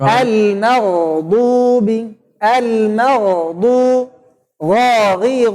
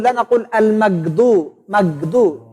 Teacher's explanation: Jadi ada suara agak panjang sedikit ya, bukan al-maqdu, bukan kayak tertahan gitu. Kalau ghainnya tuh sukun maka suaranya agak panjang sedikit, mengalir sedikit.